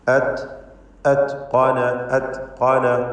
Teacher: അത്ഖന താഇൻ്റെ സുക്കൂൻ ഹംസ് ചെയ്തുകൊണ്ട് വ്യക്തമാക്കി ഉച്ചരിക്കണം. അതായത് അത്ഖന എന്ന് തായിന് ഖൽഖല നൽകി ചലിപ്പിക്കരുത്.